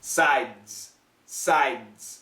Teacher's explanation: the tongue goes to the top and hits the D like a stop T a stop D and from that stop D position we do this sides sides